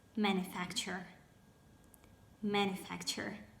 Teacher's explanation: Now, there we go with the words where the second syllable is stressed, and they are adventure, adventure, departure, departure, nomenclature, nomenclature, expenditure, expenditure. And the only word which I found where the third syllable is stressed is manufacture